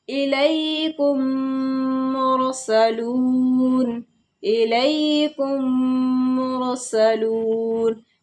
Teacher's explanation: میم کو میم سے ملا کر کے گنہ کے ساتھ پڑھا جائے گا. جیسے الیکم مرسلون، الیکم مرسلون، یہاں میم ساکن ہے اور میم ساکن کے بعد ہی میم آ رہا ہے، تو یہاں پر ہمارا گنہ کیا جائے گا. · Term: ادغام شفوی